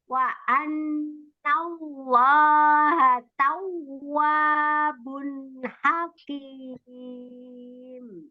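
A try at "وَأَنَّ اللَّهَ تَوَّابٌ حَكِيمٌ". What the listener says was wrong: Wow, tasdidnya tadi kenapa? Gimana hukumnya? Wow, tasdid dinaberkan. Iya, ditekan ya, naber itu ditekan. Namanya naber hukumnya.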